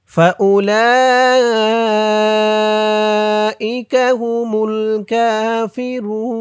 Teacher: চার আলিফ টান হবে, মধ্যে মুত্তাসিল, ফাউলাইকা হুমুল কাফিরুন, হুমুল কাফিরুন অক্ফ করার কারণে পেশের পরে ওয়াও সাকিন, এক আলিফ টানটা তিন আলিফ টান হয়ে গেছে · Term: মধ্যে আরজি